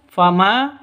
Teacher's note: ma panjang dua ketukan karena ada alif diawali dengan fat fathah mad asli atau mad thabi'i.